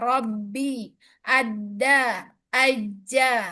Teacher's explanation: huruf-huruf qalqalah yang tasydid ba, dal, dan jim itu ditekan syiddah